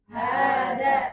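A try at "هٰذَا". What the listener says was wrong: Haknya agak panjang dikit ya. Hadza. Hadza.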